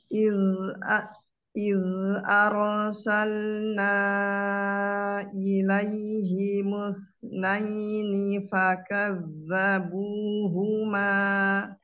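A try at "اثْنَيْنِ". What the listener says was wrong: Ya, pas yang sa dan musna dikeluarkan suara sukunnya. Musna, coba. Jadi suaranya itu ke dalam, mus gitu.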